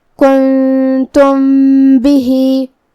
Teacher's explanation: با حروف الاخفاء الشفوی میں سے ہے، تو ہم یہاں میم کو چھپاتے ہوئے اور غنہ کے ساتھ یہ حکم کو ادا کریں گے